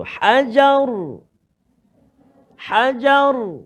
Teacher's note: ra yang kita matikan dia dengan sebab waqaf, maka sebelum dia baris atas kita bunyi tebal, tebal huruf ra tu